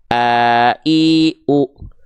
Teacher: pita suaranya menutup ya Sehingga enggak keluar nafas untuk Hamzah